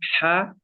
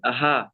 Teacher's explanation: জি হুজুর, প্রথমেরটা হচ্ছে বড় হা, আর শেষেরটা হচ্ছে ছোট হা। বড় হা গলার মাঝখান থেকে উচ্চারণ হয় হা, আর ছোট হা গলার শুরু অংশ থেকে উচ্চারণ হয় হা।